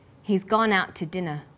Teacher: We stress he's, gone, out, and dinner. The two is unstressed. When we link out, which is stressed, and to, which is unstressed, the final t sound in out is held slightly longer.